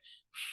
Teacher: اوپر کے دانتوں کے کنارے اور نچلے ہونٹوں کے تر حصے سے ادا ہوتا ہے۔